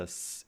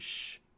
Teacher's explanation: If you feel a s and sh, you can feel there's a difference in how forward you are. S as in sip is on the alveolar ridge, while sh as in ship is a little bit behind it.